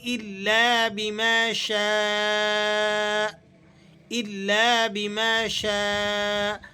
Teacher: مد متصل واجب ہے، اس مد کو آپ نے 4 الف کے قائم مقام کھینچ کر ادا کرنا ہے